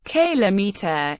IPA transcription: ˈkɪləmiːtə